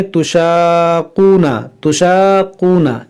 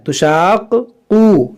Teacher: یہاں پر لوگ غلطی کیا کرتے ہیں، کیونکہ یہاں پر دیکھیں قاف جو ہے مشدد ہے، یعنی قاف پر تشدید ہے، تو تشدید والے حرف کو 2 بار پڑھنا ہوتا ہے، اور یہیں پر لوگ غلطی کرتے ہیں، اس کو 1 بار پڑھتے ہیں۔